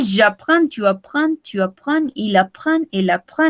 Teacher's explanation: On ne prononce pas le S final ni le D final.